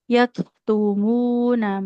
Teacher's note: huruf kaf harus mengalirkan nafas